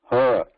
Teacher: But this ha itself is a sound of breath with a vibration, like ha. Like when we say ga, if you hold your fingers around your neck, front side, so you can experience the vibration when you say ga.